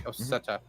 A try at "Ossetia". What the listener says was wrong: There's an I in there. It's Ossetia.